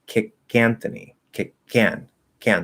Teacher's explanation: we're not going to push out that k that breath in the k it's going to be weak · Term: weak k